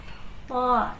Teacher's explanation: To dia pangkal lidahnya dinaikkan. To, jadi dia bersih ya, tidak ada nafas yang keluar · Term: huruf to